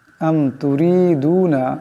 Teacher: أم تريدون এখানে রা পাতলা আওয়াজে পড়তে হবে।